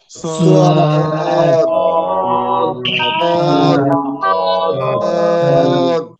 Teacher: মোটা আওয়াজে পড়তে হবে, চার আলিফ টেনে পড়তে হবে। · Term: সদ